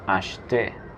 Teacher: El verbo comprar en francés es acheter. La E del medio no se pronuncia, sería acheter.